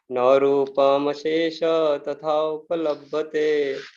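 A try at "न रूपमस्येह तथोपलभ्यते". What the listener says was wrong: Ashesha is not there. Pronunciation has to be correct. Is it Ashesha? Is it Na rupam Ashesha?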